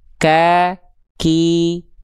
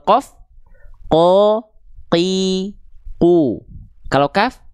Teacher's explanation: Kalau kof teman-teman ya masih keluar nafas berarti teman-teman terlalu keluar. Karena yang teman-teman lafalkan adalah huruf kaf. Harusnya gimana? Qof lebih dalam lagi